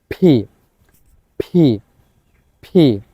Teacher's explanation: তাহলে পি, প দিয়ে এরকম না, আমাদের এটা শুদ্ধভাবে উচ্চারণ করতে হবে ফি, ফি। অর্থাৎ দুই ঠোঁট একসাথে লাগবে, ধাক্কা দিয়ে অনেক বাতাস বের হয়ে আসবে এভাবে, ফি, ফি, ফি। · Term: ফি সাউন্ড